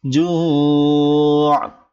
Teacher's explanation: জু টান দিয়ে আইনকে ধরতে হবে